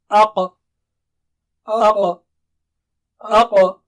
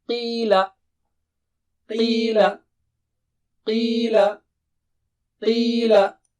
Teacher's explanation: Qaf is in between them. Inside is Kha, outside is Ka, and in between is Qa. Don't say it as Kha or Ka, and don't say it with low sound.